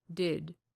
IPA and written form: dɪd (did)